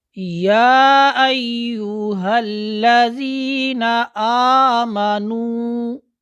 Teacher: ایک الف کی مقدار میں نے مد کی ہے۔ اب ہم اس کو 2.5 الف تک لے کے جاتے ہیں۔